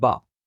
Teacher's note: مخرج کا خیال کرتے ہوئے ہم ان کی ساؤنڈز کو پڑھیں گے، یعنی لپس کو آپس میں ملاتے ہوئے حرف با کی ساؤنڈ کو پڑھا جاتا ہے